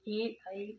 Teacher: ए और आई इनको कंठ प्लस तालु वर्ण कहते हैं क्योंकि इनका उच्चारण कंठ और तालु दोनों से होता है। क्योंकि ए है वो ए प्लस ई से और ये आ प्लस ई से बना होता है।